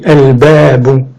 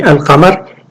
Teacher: Donc c'est comme, donc le huruf qamariya, c'est comme on appelle al-qamar. Comme on dit al-qamar, il n'y a pas de gémination, il n'y a pas de shadda sur le qaf. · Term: sans gémination